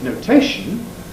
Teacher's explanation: One of the effects of the suffix ation is to cause stress to fall on itself.